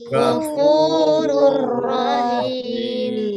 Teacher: Lam, Lam dan ro. Membacanya dengan memasukkannya tanpa dengung. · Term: idgham bila gunnah